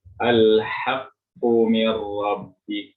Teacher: Yang pertama adalah qaf, yang keluar dari lisan bagian belakang dan ditempelkan dengan langit-langit atas bagian belakang.